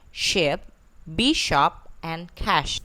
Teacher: Next is Sh, which is voiceless, alveopalatal, and fricative. The initial, medial, final like ship, bishop, and cash.